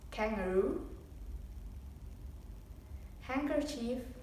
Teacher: raising the back of your tongue so it can touch the soft palate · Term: plosive sounds